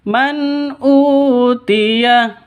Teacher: nun mati bertemu dengan Hamzah jelas terang karena izhar